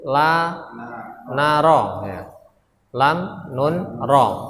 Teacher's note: ujung lidah ketika bertemu dengan langit-langit ada huruf la, na, ro